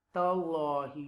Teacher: You will read with the tafkhim because there is a zabar before Allah name